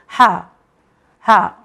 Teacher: ये भी हुर्फ हल्की है, मगर इसे हलक के लास्ट पार्ट से निकला जाता है हा। इसे निकालने के लिए कोई तकलीफ नहीं, कोई मशक्क़त नहीं करनी पड़ती, ये नॉर्मल है हा।